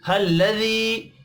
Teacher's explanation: या के ऊपर छोटी मद है, 3 अलिफ के बराबर खींच कर पढ़ेंगे। अंशअहा, अंशअहा नून साकिन के बाद शीन है, इख्फ़ा हकीकी होगा।